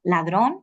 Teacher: ladrón una palabra aguda cae en la última